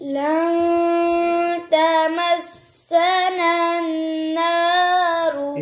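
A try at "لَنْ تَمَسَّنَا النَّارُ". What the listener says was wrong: ये नन दूसरा गुन्ना आपने छोड़ दिया, एक किया है.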